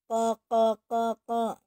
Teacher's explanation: Dia mempunyai sifat satu, jahar, tidak mengalirnya nafas. Sifatnya jahar, tidak mengalirnya nafas.